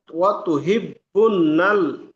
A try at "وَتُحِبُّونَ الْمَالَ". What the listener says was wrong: আবার বুননাল হয়ে গেল। অত হিব্বুনাল, বুনাল, বু, বু।